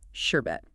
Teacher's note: it depends on where you're from and how you talk but the standard way to say it is with the r in both parts